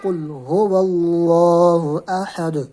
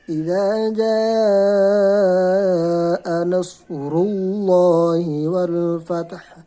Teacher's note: اللہ کے لام سے پہلے زبر ہوگی یا اللہ کے لام سے پہلے پیش ہوگی تو اس کو ہم موٹا پڑھیں گے، پر کر کے پڑھیں گے، اور اللہ کے لام سے پہلے اگر زیر آ جائے تو اس کو ہم باریک پڑھیں گے۔